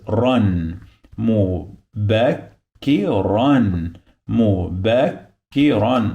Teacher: the pronunciation of this ra, this letter, it must have N in the end, which is the sound of noon. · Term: tanween bil fath